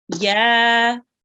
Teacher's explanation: we have the Ya, which carries a fatha. So we read this for 2 seconds. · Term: Alif Madiyah